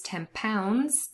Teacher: There was assimilation n changing into m to become more similar to the p that is following.